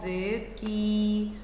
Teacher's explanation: ज़ुबान की जड़ को कव्वे मतलब तालू के नर्म हिस्से से लगाकर अदा किया जाता है। इसकी आवाज़ मोटी है और हलक की तरफ से आती है। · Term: कौफ